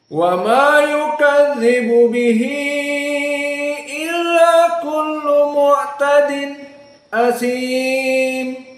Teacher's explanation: ayat yang ke-12 maka di sini pengkhususan dari qiraah Hamzah azzayyad pertama di sini ada ha Mad Silah alkubro karena bihi illa bertemu ha dengan Hamzah